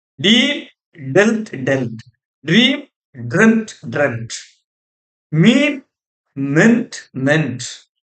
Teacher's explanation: the pronunciation in present tense falls from long vowel to short vowel in past tense and past participle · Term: Long vowel, short vowel